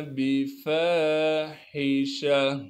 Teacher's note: गोलता को वक़फ़ में हा बना देंगे।